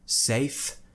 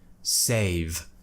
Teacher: And it's just that tiny bit of voice which I add to the end. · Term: voiced consonant